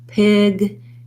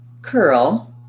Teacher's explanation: pig it might sound more like pick what's happening there is the difference between my voice being on for the g sound and my voice being off for the k sound